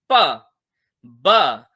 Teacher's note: because both the lips are involve तो इसको बोलते हैं बाइलेबियल